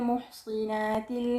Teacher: Dan bacaan yang seterusnya adalah Kisai, dengan mengkasrahkan sad pada kalimah al-muhsanat